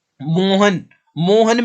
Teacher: अगर आप मोहन को आवाज लगाओगे तो आप मो को ही खींचोगे, ह और न को नहीं खींचोगे। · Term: प्लुत स्वर